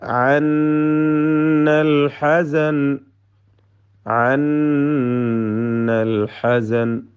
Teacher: ഐനും ഹാവും ഒക്കെ വ്യക്തമാക്കി അതിൻ്റെ മഖ്റജിൽ നിന്ന്, തൊണ്ടയുടെ മധ്യത്തിൽ നിന്ന് ശരിയായ വിധത്തിൽ ഉച്ചരിക്കേണ്ടതാണ്